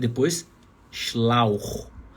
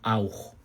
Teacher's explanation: Porque o CH no final é um CH rasgado, não aquele CH da palavra ich. Porque está depois de A mais U.